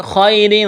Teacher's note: خا کو موٹا کرنا ہے، یا لین ہے، کھینچنا نہیں ہے · را کے نیچے 2 زیر تنوین ہے، را کو باریک کرنا ہے